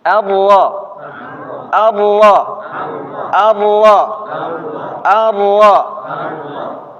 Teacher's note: ujung lidah Pak bertemu dengan pangkal gigi seri atas